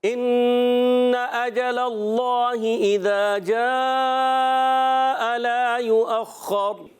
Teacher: انا یہاں حمزہ ہے، اس کو خوب ظاہر کریں گے، نون مشدد، ایک الف کا غنہ کرنا ہے